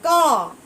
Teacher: जैसे हम कहेंगे क तो कंठ से हमारी आवाज आती है